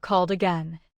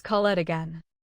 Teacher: Called ends with D, and the following vowel keeps the phrase connected. Say it as one smooth thought, not as called it again.